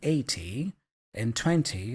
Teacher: in British English maybe you might hear people pronouncing the t's more often